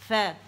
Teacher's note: فا میں تو اوپر کے دو دانت آ رہے ہیں یہ بطن الشفت السفلی پر